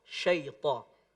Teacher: Sya-nya pada kata syaitan ditebalkan lebih tebal